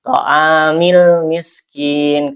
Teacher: alif lamnya dibaca ya izhar ya jelas